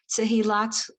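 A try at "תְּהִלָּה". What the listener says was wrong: Except it's not Tehillat, it's Tehillah.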